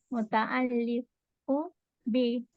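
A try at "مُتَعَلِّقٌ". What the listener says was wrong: Tanwin. Muta'alliqun. Tanwin aja.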